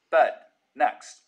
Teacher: Trap, moving up higher, pushes the dress vowel back in the mouth. So words like bed, next, sound like bud, next.